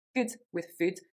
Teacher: in the Scottish accent, actually they would become the same, good with food. So they would both become more of that phoneme rather than the oo. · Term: clipped oo